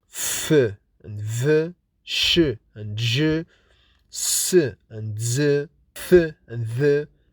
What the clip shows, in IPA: f, v, ʃ, ʒ, θ, ð, s, z